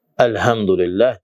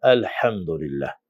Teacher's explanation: Və demirsən ki elhamdülillah, deyirsən elhamdülillah. Çünki hə burada boğazın ortasından çıxır. Boğazın ortasından çıxan iki hərf ayn və hədir.